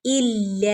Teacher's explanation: ഇല്ല ലാമിന്റെ മുകളിൽ ശ്രദ്ധ വന്നിട്ടുണ്ട് ഒന്ന് കനപ്പിച്ച് ഓതി കൊടുക്കുക അതുപോലെ ലാമിന്റെ കൂടെ അലിഫ് മദ് വന്നിട്ടുണ്ട് രണ്ടനക്കം നീട്ടി കൊടുക്കുക സാധാരണമായ മദ്